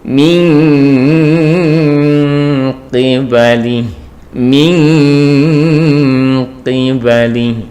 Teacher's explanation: nun sukun bertemu qaf, maka di sini adalah nunnya seperti eng gitu ya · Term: ikhfa ab'ad